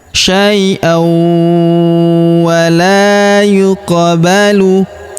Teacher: Huruf la kita panjangkan 2 harokat karena terdapat alif di depannya.